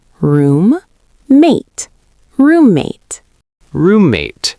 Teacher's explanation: Make sure you clearly say both M sounds.